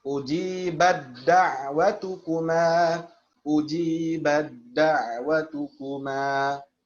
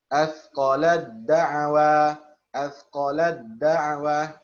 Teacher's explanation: Ketika tak sukun diidghamkan ke dalam huruf dal, yakni diucapkan secara sempurna, yakni kamil. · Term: idgham kamil